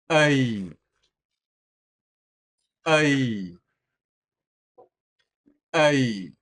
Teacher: You should feel vibration deeper in your throat.